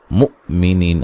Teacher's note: مؤمنین حمزہ کو جھٹکے سے ادا کریں گے